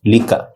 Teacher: লিকা ছোট কাফ নরম হবে, টান নেই।